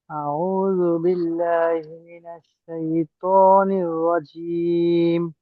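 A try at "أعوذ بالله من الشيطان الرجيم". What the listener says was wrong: আচ্ছা, একটা বিষয় দেখেন, আহ, আইনার একটু চাপ রাখবেন। আর আউযু বিল্লাহি, এটা এই শব্দটা হলো এমন আউযু বিল্লাহি, দুই অংশ।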